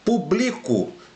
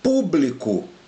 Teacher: Então aqui a sílaba tônica é o bli e nesse aqui a sílaba tônica é o pu.